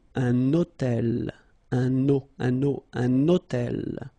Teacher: I'm making this little liaison, this little link between the two.